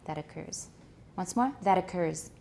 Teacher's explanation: we're going to link it with a tap